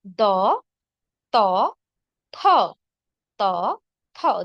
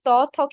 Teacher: গোড়াকে আমরা দন্তমূল বলবো যেমন দ ত থ ত থ দেখুন ত থ কিন্তু আমাদের দাঁতের গোড়া পাশাপাশি দাঁতে স্পর্শ করে উচ্চারিত হচ্ছে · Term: দন্ত ধ্বনি